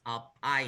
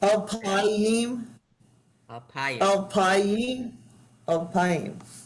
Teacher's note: So the emphasis is not on the last syllable, but under the next it's on the next last syllable. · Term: penultimate syllable